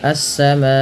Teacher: Terjadi sebab karena adanya hamzah yang datang setelah huruf mad berupa alif. Maka bunyi suara ma dipanjangkan 4 atau 5 harokat. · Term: mad wajib muttasil